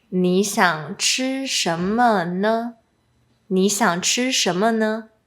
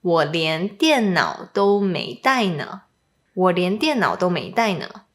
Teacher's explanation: when ne is added after a statement for emphasis or exaggeration, it's pronounced with a lower pitch.